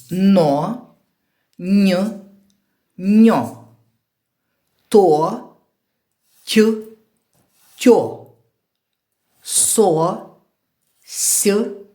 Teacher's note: цих буквосполученнях ми з вами прочитали з м'яким знаком Нью і відчули як пом'якшився попередній приголосний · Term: пом'якшений попередній приголосний